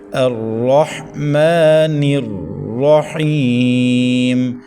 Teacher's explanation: را کو زبر کی وجہ سے پر پڑھیں، حا کو حلق کے درمیان سے ادا کریں. میم کے اوپر کھڑی زبر ہے، 1.5 الف تک کھینچیں